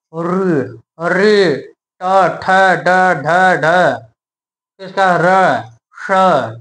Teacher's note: इन सभी का उच्चारण स्थान क्या हो जाएगा? मूर्धा हो जाएगा